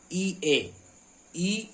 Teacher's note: तो जो अग्र भाग से वह अग्र स्वर कहलाएंगे। यह है अग्र स्वर यानी जीभ के अगले भाग से बोले जाने वाले स्वर